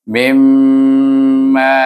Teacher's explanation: idgham ma'al gunnah, iaitu idghamkan mim kepada mim, kemudian didengungkan dia